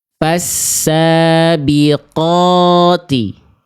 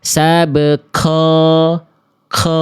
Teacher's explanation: Qof yang kedua kesalahannya itu jadi seperti huruf kaf atau ada nafasnya keluar. Kan udah sepakat kita tadi qof enggak boleh ada keluar percikan nafas.